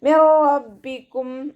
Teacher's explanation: നൂൻ സാക്കിനയെ നമ്മൾ റോയിലേക്ക് ലയിപ്പിക്കുന്നുണ്ട്, പക്ഷേ മണിക്കാതെ ഓതാൻ ശ്രദ്ധിക്കുക. മിർ റബ്ബിക്കും എന്ന് പറഞ്ഞിട്ട് മണിച്ചിട്ട് ഓതരുത്. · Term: ഇദ്ഗാം ബിലാഉന്നയുടെ